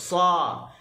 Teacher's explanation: huruf sad disebut pangkal lidah terangkat, hujung lidah terangkat. Dia menyebabkan ada taqa'ur fil lisan, ada lekukan pada tengah lidah.